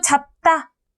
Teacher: 디귿이 쌍디귿으로 된소리로 변한 것을 경음화라고 했습니다